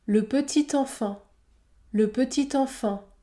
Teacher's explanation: la liaison est au obligatoire entre un adjectif et le nom qui suit par exemple le petit enfant le petit enfant le T se prononce t